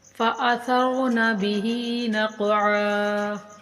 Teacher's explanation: قاف بھی حروف کلکلا میں سے، اس کو ہلا کر پڑھیں گے اور عین کو ایک الف کے برابر کھینچ کر پڑھیں گے۔